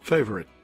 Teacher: 我们词尾的▁T▁没有发出来，这就是我们所谓的喉塞音